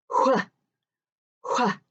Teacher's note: In fact, Most people, when they see WHs, just pronounce it like a W. It kind of makes the sound of a W and an H together at the same time.